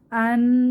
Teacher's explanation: নাক থেকে একটা গুনগুন আওয়াজ বের হলো একটু সময় ধরে রাখলাম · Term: গুন্নাহ